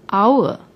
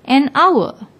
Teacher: Although hour starts with H, but when we pronounce the word, the H is silent. We pronounce it as if it begins with the second letter, the vowel O, hour.